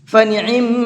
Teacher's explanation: میم کے اندر غنہ کریں گے، یعنی کہ آواز کو تھوڑی دیر ناک میں روکیں گے، ایک الف کے برابر، یعنی 1 سے 2 سیکنڈ تک ایسا کرنا ہے۔